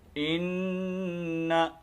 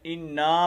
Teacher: تو انا نہیں کرنا، بلکہ یہ صرف حرکت ہے زبر کی، تو اس کو خیال رکھنا ہے، صرف ان غنہ کرنے کے بعد نون کو لمبا نہیں کرنا